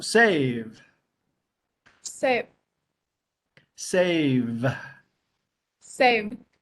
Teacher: the V has a little bit of a vibration